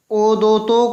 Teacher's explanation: ओ और औ का उच्चारण स्थान क्या होगा? कंठोष्ठ होगा।